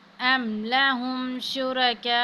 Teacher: الف پر مد ہے، تو یہاں پہ جو ہے اس کو 5 الف کے برابر کھینچیں گے